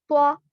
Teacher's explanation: इसके बाद है त्वा, त्वा, ता और दाल का जो मखरज है वही त्वा का भी है, लेकिन त्वा को मोटा पढ़ेंगे। त्वा जुबान की नोक ऊपर के दांतों के अंदरूनी हिस्से को लगेगी, लेकिन इसको मोटा पढ़ना है।